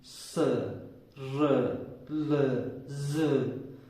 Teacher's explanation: इसके बाद वत्स्य दंतमूल, स, र, ल, ज, आप देख सकते हैं कि इन वर्णों का प्रयोग, इनका उच्चारण करते समय भी जिस भाग का प्रयोग हो रहा है वह दंतमूल है, यानी कि दांतों का जड़ का भाग है।